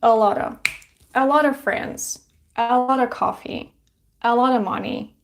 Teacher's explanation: very often it's pronounced a lot of. So of sounds like a schwa sound.